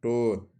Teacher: मुरधन्य अल्पप्राण अघोष वर्ण का उदाहरण है